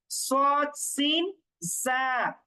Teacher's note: সদ সিন জা উচ্চারণ করার সময় একটু শি দেওয়ার মতো উচ্চারণ করতে হয়, এটা এই হরফগুলোর বৈশিষ্ট্য।